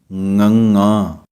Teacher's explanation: ਸੋ ਇਸੇ ਤਰ੍ਹਾਂ ਹੀ ঙ ਦੀ ਆਵਾਜ਼ ਇਹਨਾਂ ਅੱਖਰਾਂ ਦੀ ਆਵਾਜ਼ ਦੇ ਨਾਲੋਂ ਥੋੜ੍ਹੀ ਜਿਹੀ ਗਲੇ ਦੇ ਥੱਲਿਓਂ ਲਿਆ ਕੇ ਸਿੱਧੀ ਨੱਕ ਰਾਹੀਂ ਲਿਆ ਕੇ ਬੋਲਣੀ ਹੈ